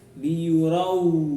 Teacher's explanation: idgham bila gunnah, dimasukkan tanpa dengung ya